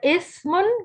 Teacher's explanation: اسی طرح سین باریک حروف ہے، سیٹی والا ہے، سیٹی سے ادا ہوتا ہے، یعنی اس کو ادا کرتے ہوئے سیٹی کی تھوڑی سی آواز آتی ہے. اور سا دونوں دانتوں کے درمیان میں ہم زبان رکھ کے ادا کرتے ہیں